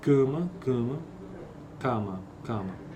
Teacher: uma vogal tônica deve ser Obrigatoriamente nasalizada quando seguida de uma consoante nasal